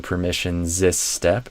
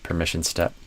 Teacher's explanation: just connect them together as one s instead of sis